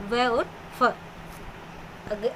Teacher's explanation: दंतोष्ठ्य, दंत और होठ से स्पर्श करते हुए ये वर्ण बोले जाते हैं। ये ऊपरी दांत व निचले होठ से उच्चारण किए जाते हैं।